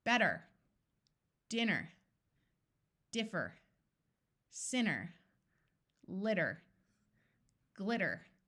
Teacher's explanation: I'm doing it with the standard American pronunciation, which I do automatically, where the T sounds more like a D